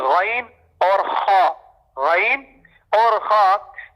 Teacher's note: اور غین خا جو ہے وہ ادنا حلق، ادنا کہتے ہیں قریب کو، یعنی جو منہ کے قریب والا حصہ ہے اس سے ادا ہوتے ہیں۔